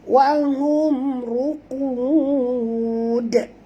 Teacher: Qalqalah besar, ya. Jadi bunyi tu mesti jelas dal yang kita qalqalahkan tu. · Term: qalqalah kubra